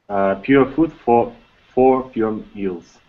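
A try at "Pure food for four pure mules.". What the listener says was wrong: I'm sorry. Try to pronounce it without pauses. Just like it can be slowly, but without pauses.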